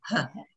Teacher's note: it's a breathy huh